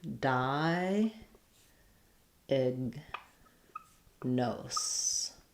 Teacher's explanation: in between, diag, this is a very reduced vowel. You're going to have a little bit of a schwa there. And then the g sound is going to be unreleased.